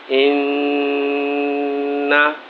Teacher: نون مشدد ہوتا ہے تو ہمیشہ اس کی آواز ناک میں جاتی ہے، یعنی ناک میں آواز پیدا کرنا پڑتی ہے